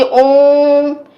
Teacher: ओ को बहुत खींच कर बोलते हैं, तो यही क्या है? प्लुत है।